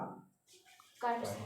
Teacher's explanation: क वर्ग का क कंठ से